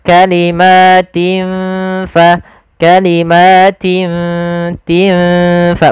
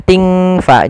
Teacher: kita samarkan huruf tin ya kepada huruf ta, seakan-akan kita langsung menghurufkan huruf fa. Maka kalimatin fa, kalimatin tin fa, bukan ting fa, jangan ang. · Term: ikhfa